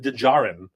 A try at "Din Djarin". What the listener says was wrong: I think D is silent. Djarin. Djarin.